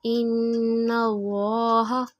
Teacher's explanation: نون مشدد پہ غنہ کریں گے ، آواز کو نا کے نرم والے حصے میں رکھ کے،